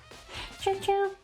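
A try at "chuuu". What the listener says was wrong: No, not chuchulu. It's 3 U's, that's a long U.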